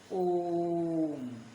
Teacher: इनके उच्चारण में हर स्वर से 3 गुना समय लगता है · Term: प्लुत स्वर